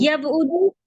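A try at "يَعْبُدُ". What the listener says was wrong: ना ना ना ना ना, एक गलती आप कर रही हैं, आप रूट लेटर्स बदल दिया आपने, आइन बा दाल है, बा आइन दाल नहीं है, ध्यान रखिएगा। आइन, आइन पहले आ रहा है ना, तो आइन की आवाज़ पहले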